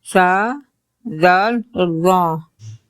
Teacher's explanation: مخرج نمبر 13 زبان کی نوک اور اوپر سامنے والے 2 دانتوں کا سرا۔ جب زبان کی نوک اوپر کے سامنے والے 2 دانتوں کے سرے سے لگے، اس مخرج سے 3 حروف ادا ہوتے ہیں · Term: نرم حروف